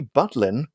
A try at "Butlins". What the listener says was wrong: Sounds like you're saying Buttlands.